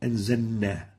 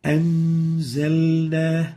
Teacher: So the lam should be clear and obvious. It should never be merged or mudgham. So avoid merging the lam into the following letter.